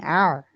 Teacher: ऐन की आवाज जो होती है वह कदरे नर्म और बगैर झटके की होती है